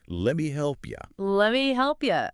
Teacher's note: you often reduces to yah at the end of sentences too